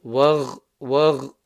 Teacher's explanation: Remember to make the guttural sound from the top of throat.